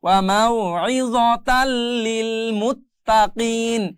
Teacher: এই জায়গায় তান হলো না, তান কিন্তু মূলত বানান করলে আসতেছে তান, কিন্তু এখানে লাম থাকার কারণে ঈদগাম হয়ে গিয়ে এখানে তাল হয়ে যাবে